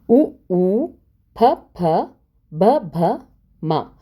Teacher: ಇವು ತುಟಿಗಳ ಸಹಾಯದಿಂದ ಹುಟ್ಟುವುದರಿಂದ ಇವುಗಳನ್ನು ಓಷ್ಠ್ಯಗಳೆಂದು ಕರೆಯುತ್ತಾರೆ